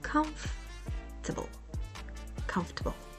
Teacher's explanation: stress the first syllable and say it clearly com and the rest table make it softer and quicker